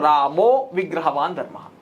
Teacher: అంటే అక్కడ రామహనే ఉంది, రామహ కాస్త రామ అహ ఉంది కదా, విసర్గం ఉంది కదా, ఆ విసర్గం కాస్త ఓకారం అయింది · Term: విసర్గ సంధి